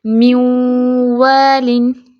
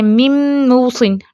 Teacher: یہ ادغام ناقص ہے، انکمپلیٹ مرجنگ، اس میں نون کی اپنی پہچان باقی ہے، جیسے ہم پڑھتے ہیں میو والن، نون کی آواز آ رہی ہے نا آپ کو، اس کی ادھوری سی نقص والی آواز یعنی کہ انکمپلیٹ آواز اس میں رہتی ہے، اس کی اپنی پہچان بھی باقی رہتی ہے۔